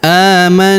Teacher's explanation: Qulu amanna, huruf a kita panjangkan 2 harokat karena terdapat alif kecil di atasnya. Amanna, huruf na kita tahan dan kita tekan, serta kita dengungkan 2-3 harokat